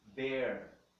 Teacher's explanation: There tem um som mais aberto, um acento agudo.